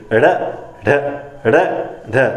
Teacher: जब ड़ का उच्चारण करते हो तो जीभ जो होती है वो बाहर की ओर फेंकती है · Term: उच्छिप्त व्यंजन